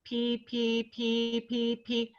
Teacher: And I would like to say that it's not pa, pa, pa, and it's not buh, it's not the B sound, it's the P sound, because we want the soft palate to actually close so you get a full peak pressure in the oral cavity. Or pa, pa, pa is another, and the ah, the soft palate also doesn't always fully close.